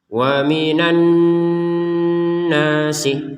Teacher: Jadi dengung itu di rongga hidung itu ada getaran dengungnya minimal 2 harokat panjang dengungnya. Jadi didengungkan 2 harokat, ditekan 2 harokat dengungannya itu.